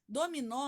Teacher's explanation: Dominó, a sílaba tônica é o nó.